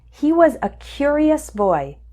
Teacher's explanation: the word stress is also different he was a curious boy the strong syllable is cure